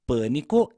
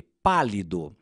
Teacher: em Pânico o a é mais fechado e em pálido o a é mais aberto